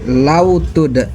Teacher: huruf qalqalah dal yang sukunnya sukun asli, dibaca dipantulkan, pantulannya kecil. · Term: qalqalah sugro